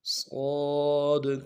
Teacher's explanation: صاد کے آخر میں دال ہے، قلقلہ کرنا ہے۔